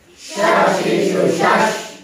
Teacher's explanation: Shashishu shash itu maka tadi dia punya sifat tafashi. Jadi udara ataupun angin yang keluar dari mulut itu banyak. Itu karakter dari sya.